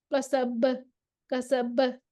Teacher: سین میں ہمس بھی ہے، رخوت بھی ہے. اس میں کمزوری کی طرف یہ جا رہا ہے. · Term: سیٹی والا